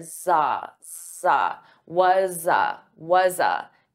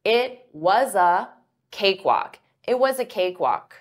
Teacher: You can combine these together and it sounds like was za. So notice I'm linking the sounds and I'm taking that was, but it's a z, it's a voiced sound. So I'm going to transfer that sound to so you hear za, was a.